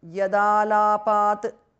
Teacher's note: The tu in the end changes to d because of sandhi.